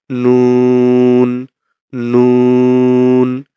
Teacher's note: জিহ্বার আগা তার বরাবর উপরের তালুর সঙ্গে লাগিয়ে নুন নাক থেকে সাউন্ডটা বের করব